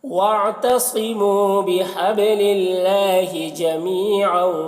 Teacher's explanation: با میں قلقلہ ہوگا اور اللہ کے لام کو باریک پڑھیں گے. جمی یہاں پر یا مدہ ہے.